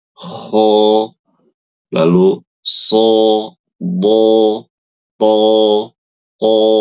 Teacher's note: Ya, contohnya huruf ko lalu sho, Do, th, qo lidahnya itu naik dan suaranya tebal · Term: sifat istilla'la